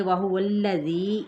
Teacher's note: واو کی زبر کو لام کے ساتھ ملائیں گے، لام کی حرکت کو کھینچیں گے نہیں